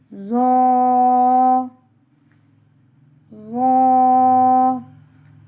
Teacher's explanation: زبان کی نوک جب انہی اوپر کے اگلے دونوں دانتوں کی نوک کی طرف والے حصے سے لگے تو ظا پڑھا جاتا ہے. ظا کو بھی ہم موٹا کر کے پڑھتے ہیں.